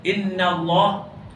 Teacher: lafzul jalalah dibaca tebal dan dibaca dua harakat